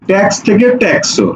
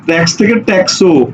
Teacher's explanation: এরপরে ওকারটা এসে যুক্ত হয়েছে, যেই কারণে ব্যাপারটা এরকম হয়ে গেছে, এইরকম হয়ে গেছে, এর সাথে ওকার যুক্ত হয়েছে, অর্থাৎ শব্দের শেষে সে যুক্ত হচ্ছে একটি স্বরধ্বনি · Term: অন্তঃস্বরাগম